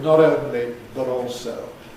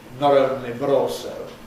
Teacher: have the American style acceleration into a tap, not only but also, that sounds to English ears like a kind of R. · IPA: [ˈnɒɾ ˈoʊnli bəɾ ˈɔːlsoʊ]